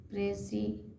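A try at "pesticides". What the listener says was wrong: आर नहीं है, आर नहीं है, जो रह बोल रही है। पी पीस नहीं भाई, पेस्टी। एस्ट है, ई एस टी, एस्ट।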